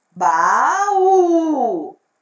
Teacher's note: O U é a sílaba mais forte e ela é a última sílaba da palavra. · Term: oxítonas